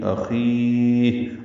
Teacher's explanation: یا ساکن اور پھر ہا ساکن بھی ہو جائے گی اخی، اور اس پہ ہمس ہوگا ، لمبا کریں گے، مد عارض پہ سکون بنائیں گے۔ پس